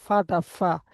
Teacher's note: ওয়াইন, ফা। জিভের এই উপরের দাঁতের আগার নিচের ঠোঁটের ভিজা অংশ সাথে লেগে এটা উচ্চারণ হবে